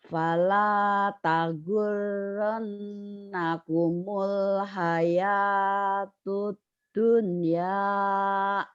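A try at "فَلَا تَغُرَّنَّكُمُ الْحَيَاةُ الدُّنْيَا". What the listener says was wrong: Tahu udah bisa cuman lagunya masih ke seberang ke Palembang Ibu ya. Fala tagurrannakumul hayatud dunya. Fala tagurrannakumul hayatud dunya.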